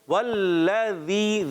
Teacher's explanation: ذال میں زبان تھوڑی باہر ہوتی ہے